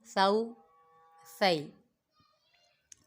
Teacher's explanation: سا میں سیٹی کی آواز نہیں نکالیں گے کیونکہ یہ حروف لیساویہ میں سے ہے